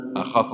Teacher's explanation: أخاف ما فيش المد، أخاف الفاء ما فيش المد، أنت مديت في الفاء شوي